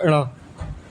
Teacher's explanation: सघोष नासिक में आता है ण